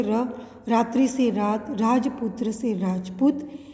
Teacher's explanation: यह हिंदी की अल्प प्राण वत्स्य सघोष लुंठित ध्वनि है।